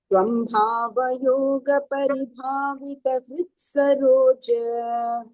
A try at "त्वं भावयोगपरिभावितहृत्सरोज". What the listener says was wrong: No. Next is a swara. So there will be a visarga. Tvam bhava yoga paribhavita hrutsarojah.